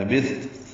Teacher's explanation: لبثت ثا نرمی سے پڑھا جائے گا، تا ساکن پہ ہمس ہوگا